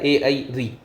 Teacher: इनमें कोई भी वृत्ताकार जो हमारा होठ है उसकी आकृति नहीं बनती है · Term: अवृत्ताकार